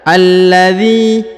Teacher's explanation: Alladzi, huruf dhi dipanjangkan 2 harokat karena di depannya terdapat ya sukun. Maka dibaca alladzi, ya.